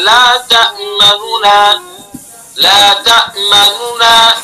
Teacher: पहला जो नून है पेश जिसके ऊपर है उसका तिहाई हिस्सा अदा करना है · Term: इजहार